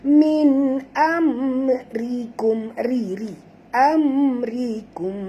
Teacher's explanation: Ra tarki, ra tipis, jangan baca tebal, jangan baca amrikum, bukan ri bunyi dia.